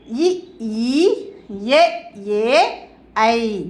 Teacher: நாக்கின் அடியோரம் மேல்வாய் பல்லை பொருந்துவதால் பிறக்கும் உயிரெழுத்துக்கள்